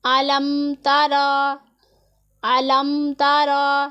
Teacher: اظہار کا مطلب ہے ظاہر کرنا۔ ہم میم کی آواز کو ظاہر کریں گے، غنہ نہیں کریں گے، اخفا نہیں کریں گے، یہاں پر اظہار ہوگا۔